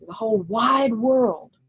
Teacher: wide world is one of those phrases where you kind of have to say both words strong